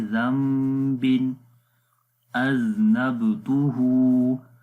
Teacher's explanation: ہے اس کے بعد با آ گیا، تو اس وجہ سے نون کو نہیں پڑھیں گے، نون کی جگہ ہم میم لے آئیں گے، تو میم کی آواز آئے گی